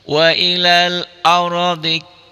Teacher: Wailal ar rnya mati tapi sebelum ro mati didahului oleh huruf yang berbaris di atas didahului fathah. Ini rnya tebal.